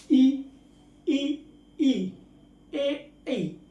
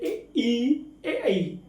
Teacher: जो अपनी जीभ होती है इसके इस आगे वाले भाग से, जिसको हम आगे वाला भाग या मुख्य भाग बोलते हैं, उससे जो बोले जाते हैं उन्हें हम अग्रस्वर कहते हैं